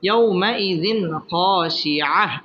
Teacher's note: বাম পাশে জজমওয়ালা ওয়াও লিনের হরফ ইয়াউমাইযিন জাল দুই জের জিন তানবিনের বামে খ আসছে খ ইজহারের হরফ এখানে গুন্নাহ ছাড়া স্পষ্ট করে পড়তে হবে